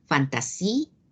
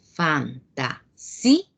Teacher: se trata de una palabra grave que tiene un hiato acentual, porque la mayor fuerza de voz recae en la I